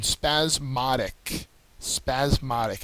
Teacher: second syllable is accented